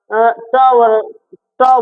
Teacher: ट कहां से आ रहा? मूर्धा से आ रहा।